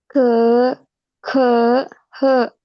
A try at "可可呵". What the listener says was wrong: Oke, nadanya datar. Jangan pakai nada dua. Ke, ke, he.